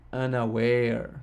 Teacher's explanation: three syllables, the first two of which are unstressed, and the last of which is stressed